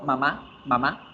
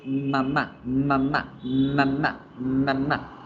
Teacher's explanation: la m la única diferencia que debo hacer es alargar un poquito la pronunciación